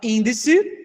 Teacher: índice não é a última, não é a penúltima, é a antepenúltima. Ela é proxítona. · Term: proparoxítona